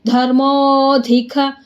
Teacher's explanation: ಧರ್ಮೋಧಿಕ ಮೋ ಸ್ವಲ್ಪ ದೀರ್ಘ ಮಾಡಿ, ಅಲ್ಲಿ ನಮಗೆ ಪ್ಲುತಸ್ವರ ಇದೆ.